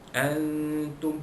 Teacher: Antum, nun mati jumpa ta ikhfa haqiqi, menyembunyikan bunyi nun mati bertemu huruf ta.